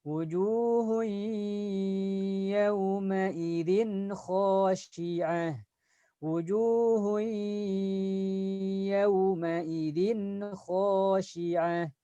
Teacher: ada tanda tanwin bertemu dengan huruf ya. Nah, ini harus dileburkan karena berbeda kata. Wujuhun, selain dileburkan tahan suara. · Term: idgham bi gunnah